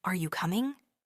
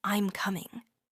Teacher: The voice stays flat or goes down slightly.